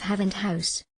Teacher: of the tongue and other parts of the mouth it is the voiceless sound H which occurs at the beginning of Haven house when the glottis is open and there is no manipulation of · When the glottis is open and there is no manipulation of the air passing out of the mouth, the sound produced is that represented by H. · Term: Glottals